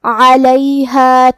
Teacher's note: حرف العین کو ہم حلق کے درمیان والے حصے سے پڑھیں گے